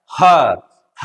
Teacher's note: ह वर्ण का उच्चारण स्थान होता है स्वर यंत्र